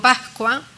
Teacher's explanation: la S en determinadas posiciones la aspiro como una J, pero yo en cambio sé que aunque sea una J cuando digo Pascua, pues estoy diciendo una S.